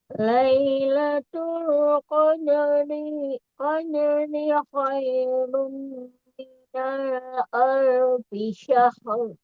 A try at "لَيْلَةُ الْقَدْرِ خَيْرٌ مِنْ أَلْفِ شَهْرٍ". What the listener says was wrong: Jangan dipanjangkan dirinya, Bun. Satu harokat saja untuk panjangnya. Lailatul Qadri khairum min alfi syahr. ada tanwin domah tain bertemu mim, di situ ada idgham biguna.